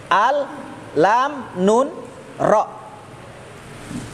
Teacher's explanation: sama semua di adna lisan kena gusi atas. Gusi, bukan gigi yang kena.